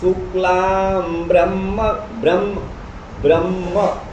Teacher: ब्र में अ ह्रस्व अ है लेकिन उधर ह म मिला हुआ है ब्रह्म तो ब्र भी ह्रस्व होते हुए गुरु हो गया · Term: संयुक्तम दीर्घम